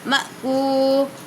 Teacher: حمزہ پر جزم ہے تو جھٹکا دے کر پڑھیں گے